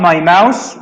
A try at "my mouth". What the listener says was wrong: No, I'm saying you said I open up my mouse. A mouse is an animal. A mouth with the TH is this.